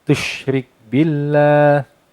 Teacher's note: Ya bunayya la tusyrik billah, tush sama seperti ketika dibaca, pastikan ada angin yang keluar dari sela-sela gigi bagian bawah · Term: huruf sya